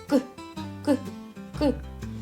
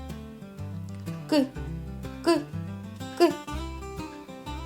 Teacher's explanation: Його не можна ні потягнути, ні проспівати. Він ніби вибухає. Звук К можна почути і вимовити. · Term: приголосний